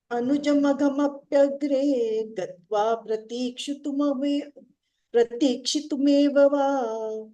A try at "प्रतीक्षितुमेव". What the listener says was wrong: Pratikshitum. If you hold the T longer, you will get it.